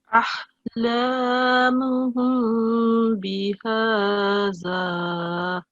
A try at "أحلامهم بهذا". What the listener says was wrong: Okay, again the sound of thal.